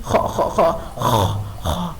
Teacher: خا حروف حلقی اور مستعلیہ میں سے ہے جس کو ہیوی لیٹر کہا جاتا ہے